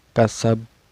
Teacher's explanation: Ini dihukumi qalqalah kubro. Cara bacanya dipantulkan dan pantulannya besar ya.